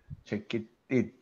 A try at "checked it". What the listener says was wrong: No, no, the T before it, not after it. Oh, you will pronounce it like this. You pronounce it like this.